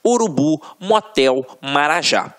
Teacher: reparem que na hora da pronúncia de forma mais aguçada você vai perceber que realmente a pronúncia da última sílaba ficará mais forte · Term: oxítonas